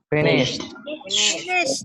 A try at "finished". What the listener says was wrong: Pakai T belakang.